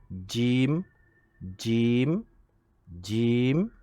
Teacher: Jim makhrajnya dia di langit atas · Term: huruf Jim